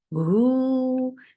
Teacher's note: make it 2 counts long, circle your lips